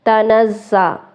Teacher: زا سٹی والے حروف میں سے سختی سے پڑھیں گے